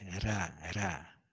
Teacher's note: This ra is like the letter R, but it's more like the Spanish R. It's trilled.